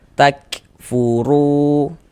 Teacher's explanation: menaikkan pangkal lidah kita ketika kita mengucapkannya. Tebalkan huruf rnya. · Maka huruf ro dibaca tabkhim, dibaca tebal. Nah, jadi kita ketika mengucapkannya itu dengan ee menaikkan pangkal lidah kita ketika kita mengucapkannya.